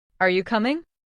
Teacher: Say this with a rising tone at the end.